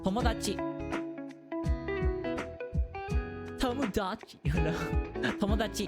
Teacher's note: Don't put too much like stress on any one syllable.